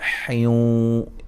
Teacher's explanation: یہاں نون تنوین کا ادغام مع الغنہ ہے